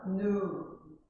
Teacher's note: In American English, the sound E is left out. Então, no inglês americano, o som do I, né, é deixado de fora, fica somente o U.